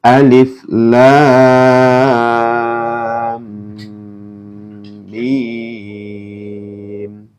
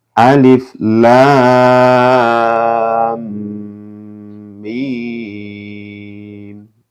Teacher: alifnya ini dibaca pendek ya, lamnya dibaca panjang